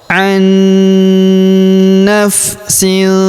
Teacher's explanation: Wattaqu yaumal la tajzi nafsun an Kemudian huruf nun sukun bertemu huruf na berharokat tasydid, maka nun sukunnya melebur masuk ke huruf na yang berharokat tasydid, kita tahan dan kita tekan serta kita dengungkan 2-3 harokat